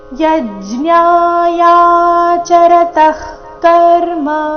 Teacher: ವಿಸರ್ಗದ ಉಚ್ಚಾರಣೆ ಇಲ್ಲಿ ಅರ್ಧ ಖರೀತಿ ಮುಂದಿನ ಶಬ್ದ ಕರ್ಮ ಕ ದಿಂದ ಪ್ರಾರಂಭ ಆದ ಕಾರಣ